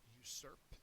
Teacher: it's a verb second syllable is accented